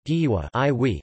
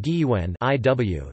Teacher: there is a minimal pair distinguished only by the nasality of the vowel